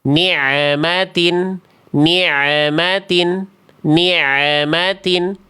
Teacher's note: adalah bacaan yang keliru karena bunyi ain sukunnya ada bunyi tambahan